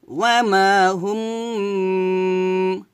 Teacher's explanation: হুম দুই ঠোঁট মিলে গুণনা করবেন